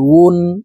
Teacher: ওয়াও হরফ ঠোঁট গোল করে দুই ঠোঁটের মাঝে ফাঁকা রেখে উচ্চারণ করতে হবে। আমরা অনেকেই ওয়ার উচ্চারণ সঠিকভাবে পড়তে পারি না, ওয়ার উচ্চারণ হামজার উচ্চারণ করে থাকি।